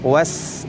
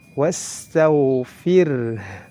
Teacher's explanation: huruf sin juga ini harus dilafazkan dengan mengalirnya nafas. Was, kemudian dialirkan karena memiliki sifat rakhawah.